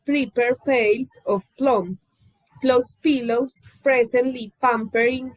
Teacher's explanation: aspiration is something that is lacking